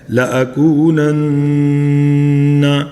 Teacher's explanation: نون کے اوپر تشدید ہے تو یہاں پہ نون گنہ کرنا ہے